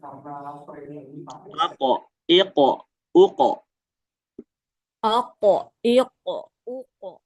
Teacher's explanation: ini kan qof ini sama ada salah satu sifatnya dia itu terangkat ya jadi ngangkat gitu bawaannya pengin ngangkat iq tapi kalau kita lihat huruf sebelumnya itu ada hamzah sedangkan hamzah itu hurufnya dia enggak terangkat.